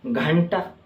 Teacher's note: अनुस्वार के उच्चारण में नाक से अधिक सांस निकलती है